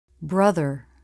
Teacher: tongue tip through the teeth for the voiced th